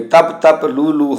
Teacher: ਇੱਥੇ ਤਪ ਤਪ ਦੇ ਪੱਪੇ ਨੂੰ, ਲੂ ਦੇ ਹਾਏ ਨੂੰ ਸਿਆਰੀਆਂ ਹਨ ਪਰ ਇਹ ਉਚਾਰਨ ਨਹੀਂ ਹੁੰਦੀਆਂ